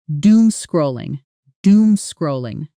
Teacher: Notice how naturally this compound word rolls off the tongue at speed. Doom and scrolling fused together almost like one single unit.